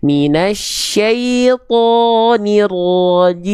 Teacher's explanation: Jadi pangkal lidah dalamnya diangkat atau didorong ke dalam biar tebal karakter pelafalannya. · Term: huruf-huruf tebal